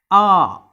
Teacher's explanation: Then coming to the back vowels, this one a, okay, so it's in the open position, the back part of the tongue that is used, so the lips are remaining flat, so it is an unrounded back open vowel